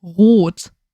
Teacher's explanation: It sounds like you hear that gargling noise, but you need less vibration.